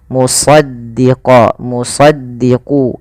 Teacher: itu apa Istia itu pangkal lidahnya terangkat kemudian idbak idbak itu lidah kita lebih melekat dengan langit-langit atas maka dia agak ditebalkan dalam melafalkan huruf is ini Mus ya bukan hanya Mus ya